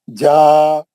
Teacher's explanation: ये जीम की जबर की एक हरकत और ये अलीफ की एक हरकत, ये मिला के इसकी मकदार होगी 2 हरकत. इसको पढ़ेंगे जा. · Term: मध्य असली